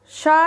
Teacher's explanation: शा ध्वनि का उच्चारण स्थान है आपका तालु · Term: तालव्य शा